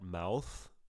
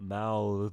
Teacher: mouth voiceless th lots of wind mouth mouth